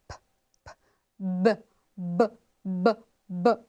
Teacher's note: consoante que é oclusiva ou plosiva e bilabial